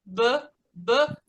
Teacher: deixa o B explodir nos lábios